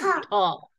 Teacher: It's like with the puff of air, aspirated sound, right?